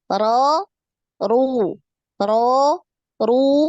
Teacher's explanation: apakah dia fathah atau damah atau kasrah kalau fathah atau damah maka dia dibaca tebal ya dinaikkan pangkal lidah